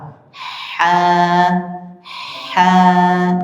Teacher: Kalau ha mengalir anginnya dulu, baru ditambah huruf vokal a.